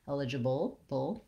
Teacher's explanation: It's almost got a little tiny schwa or sound before it, bull, bull, but as much as possible I go from my B right to my sound. Keep the back of your tongue down when you're doing that dark syllabic L